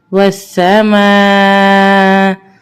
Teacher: میم الف مد زبر ما. اب یہاں پہ یہ مد متصل ہے جس کو ہم 4 الف کے برابر کھینچیں گے